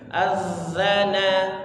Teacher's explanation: Terus terus bawahnya sama seperti tha, lidahnya dikeluarkan, ujung lidahnya. Az, getarkan ya, lidahnya bergetar.